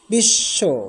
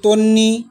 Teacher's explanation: বফলার উচ্চারণ নেই। কিন্তু পূর্ববর্ণ দীপ্ত হয়। অর্থাৎ পূর্ববর্ণ দুইবার উচ্চারিত হয়। যেমন বিশ্ব শব্দে বফলা রয়েছে কিন্তু বফলার উচ্চারণ নেই।